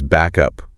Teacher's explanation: Instead of a clear stop back up, that final K sound just sort of attaches itself to up. So it becomes back up, one smooth sound. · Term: linking sounds, linking sounds between words